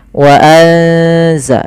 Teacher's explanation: Suara nunnya disamarkan ke zai. Wa anza, sambil ditahan bacaan eng-nya atau bacaan gunnah ikhfa, ya, dengungannya.